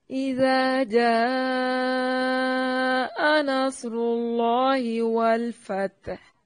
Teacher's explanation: اذا حمزہ کو تحقیق سے پڑھیں گے، نرم نہیں پڑھنا، زال کو نرم ادا کریں گے اور اس کو اس کے مخرج سے نکالنا ہے۔